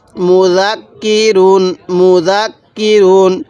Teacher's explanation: কাফের উপরে এই তাজদি চিহ্নটা আছে তাহলে কাফটা দুইবার উচ্চারণ হবে